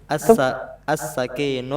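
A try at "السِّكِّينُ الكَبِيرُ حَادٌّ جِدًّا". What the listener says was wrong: As-sikinu. As-sikinul. K-nya pakai tasydid as-sikinu.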